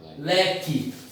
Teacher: L, Q, U, E. Esse QU, ele tem um som de K. E esse E tem um som de I. · Porque o U não é pronunciado. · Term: dígrafo